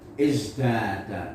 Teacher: Taknya diganti dengan dal, izdada. Ini asimilasi.